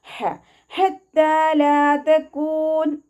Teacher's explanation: ഹത്തല ഹ എന്നുള്ള അക്ഷരത്തിൻ്റെ സൗണ്ടിനെ ഹ എന്നുള്ള അക്ഷരത്തിൻ്റെ സൗണ്ടായി പോവാതെ നോക്കുക. തൊണ്ടയുടെ മധ്യഭാഗമാണ് മഹ്റജ് വരുന്നത്, അവിടെ നിന്ന് തന്നെ അക്ഷരത്തിൻ്റെ സൗണ്ടിനെ കൊണ്ടുവരാം